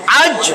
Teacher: দেখেন জিহ্বার মধ্যেই লাগছে আজ আটকে গেছে আজ কইয়া থামেন দেখেন আজ জিহ্বা কিন্তু আটকে রইছে তালুর সাথে